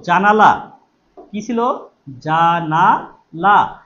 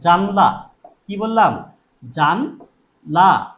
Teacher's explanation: এইযে আকারটা লোপ পেয়েছে জানলা হয়ে গেছে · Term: মধ্য সরালোপ